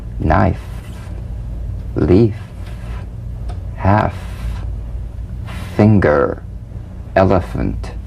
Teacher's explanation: The F is a cognate to the V, the unvoiced fricative labiodental. Upper teeth to lower lip, just like the V. Now, feel the V, then turn off the voice and continue in a whisper.